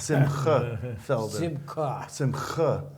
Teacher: we have to get you to that guttural sound of a ch